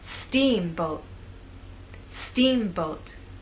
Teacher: making the first part of the word louder longer and at a higher pitch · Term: stressed part